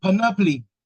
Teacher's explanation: The stress is on the first syllable, panoply.